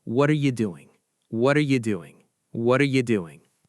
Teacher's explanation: That's a flap T. Your tongue tip just flicks the roof of your mouth. It doesn't stop.